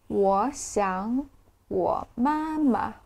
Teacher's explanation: the tone is written 3 3 3 1 0 but when we speak in real conversations it will change into 2 2 3 one zero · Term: tone changes